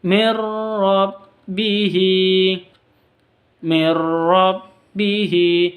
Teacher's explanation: nun mati bertemu dengan ro masuk tanpa dengung idgham Bila gunah masuk langsung ke ro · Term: Idgham bila gunnah